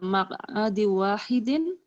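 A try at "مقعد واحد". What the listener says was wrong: Maq'adin wahidin. Jangan dihunah Bu ya. Ini bukan baca Al-Qur'an ya.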